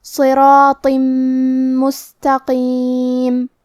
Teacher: میم حروف الادغام بغنہ میں سے ہے اور ادغام کا معنی ہے حرف کو حرف میں داخل کرنا، تو ہم یہ تنوین کو میم میں ملا کے غنہ اور تشدید کے ساتھ یہ حکم کو ادا کریں گے